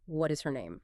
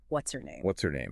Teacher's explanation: But when spoken naturally by a native speaker at conversational speed, the ache gets dropped, the spaces vanish, and it becomes one giant, flowing, multisyllable word.